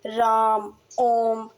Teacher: इनके उच्चारण में दीर्घ स्वर से भी अधिक समय लगता है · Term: पलु स्वर